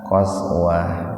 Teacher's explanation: Ini tak marbutoh. Kalau mau berhenti di situ, maka taknya dibaca sukun, berbunyi ha